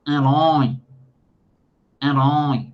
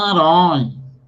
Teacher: o som acaba passando para o nariz também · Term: fanho